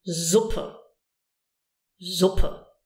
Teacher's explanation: Now the S can be pronounced in different ways. One is a Z, using your voice. Z, as in Suppe.